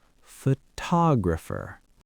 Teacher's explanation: But look what happens to the first O. It lost its stress so it goes to sleep. It turns into a schwah.